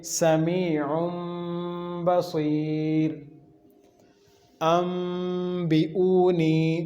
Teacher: نون نہیں پڑھیں گے ہم تینوں صورتوں میں، یہاں پر میم کے ساتھ بدل کر پڑھیں گے · نون تنوین کے بعد با آ گیا دوسرے کلمہ میں، تو یہاں بھی اس نون تنوین کو میم کا ساؤنڈ دیں گے. تو پڑھیں گے سمیع بصیر، انبئونی.